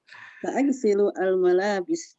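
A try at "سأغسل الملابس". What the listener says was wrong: Mumtaz ya.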